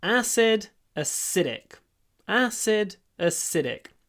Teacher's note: So maybe the most interesting thing here is that acid, the stress is on the a, but acidic, the stress is on the sid, or the si, I should say.